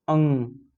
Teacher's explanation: और अनुनासिक जिसपे चंद्रबिंदु लग जाता है, उन वर्णों का उच्चारण कर, जैसे आप बोले अंग, अंग बोल रहे हैं तो आपके मुंह से और नाक से दोनों से हवा निकल रहा है।